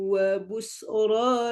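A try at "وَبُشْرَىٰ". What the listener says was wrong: Wa busyra atau fasih pada shin kurang.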